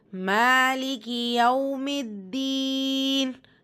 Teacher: மீம்லேருந்து தால நீங்கள் சேர்த்து ஓதுவீங்க, ஷத்தாக்குரிய அழுத்தத்தை கொடுத்து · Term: ஷம்சியா